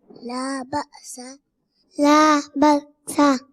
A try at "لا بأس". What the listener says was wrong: میرے بچے بکسا نہیں ہے, لا بأسا, لا بأسا, با حمزہ زبر با, با سین زبر سا, با سا, لا بأسا, لا بأسا,